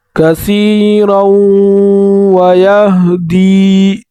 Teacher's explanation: را کو پر پڑھیں گے اور واو کے ساتھ ملا کر اس میں غنہ بھی کریں گے